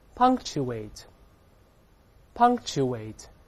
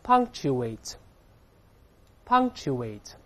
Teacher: k▁失去爆破了，本来▁k▁是个爆破音，爆破音后面出现其他辅音，前面爆破音只做动作